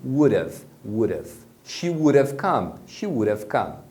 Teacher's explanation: como o D acaba ficando no meio de dois sons de vogal, você pronuncia esse D com o som de R